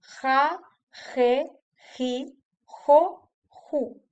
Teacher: es como una ha aspirada pero más fuerte como si tuviéramos algo atorado en la garganta · La otra pronunciación es la que comparte con la consonante J, eh, cuya- cuyo sonido no existe en inglés. Es como una H aspirada, pero más fuerte, como si tuviéramos algo atorado en la garganta. Se puede hacer cuando la J está unida a cualquier vocal.